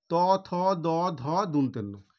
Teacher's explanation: জিভটা just দাঁতের গোড়াতে গিয়ে স্পর্শ করছে এবং তখনই কিন্তু এই বর্ণগুলো উচ্চারণ হচ্ছে। দাঁতের গোড়াতে গিয়ে স্পর্শ করছে, সেই জন্য এই ত থ দ ধ দন্তেন্ন এই বর্ণগুলো উচ্চারণ হচ্ছে। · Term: দন্তমূলীয় বর্ণ